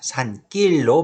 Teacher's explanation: 근데 뒤에 안울림 예사소리 기역이 왔으니까 니은 뒤에 기역은 된소리가 돼서 산길로 발음되고요